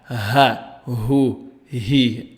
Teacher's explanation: The letter ha is unvoiced, meaning that the vocal cords do not vibrate during its pronunciation.